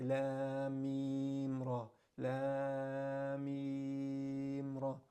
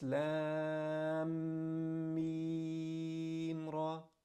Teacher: So hold your lips down for a second long, for 2 harakat long.